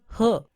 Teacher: ग्लॉटल, कंठ से बोले जाने वाले साउंड